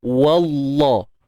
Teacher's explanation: Kita tebalkan pada lam saja. Waw tu steady je, nipis.